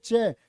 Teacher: चे होता आपका तालव्य, तालु से बोला जाएगा।